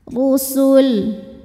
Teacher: Huruf ra dibaca secara tafkhim karena berharokat dhammah, maka ra ditebalkan.